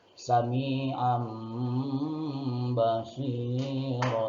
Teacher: Tanwin atau nun mati dipindahkan ke suara mim, itu iklab.